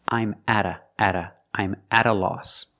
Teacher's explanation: the t is pronounced like a fast D because it's between vowels